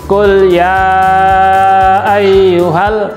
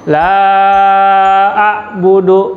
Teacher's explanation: maka dia hukumnya adalah mad jaiz munfasil, harus dibaca panjang 2-5 harokat · Huruf-huruf yang berwarna biru ini mengandung hukum tajwid mad jaiz munfasil, karena ada mad asli atau mad tabi'i bertemu dengan hamzah di lain kata, maka hukum bacaannya panjang 2-5 harokat. Contohnya kul ya ayyuhal, itu 5 harokat panjangnya.